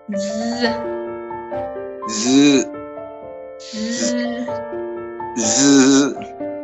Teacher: you make the tip of your tongue to touch the teeth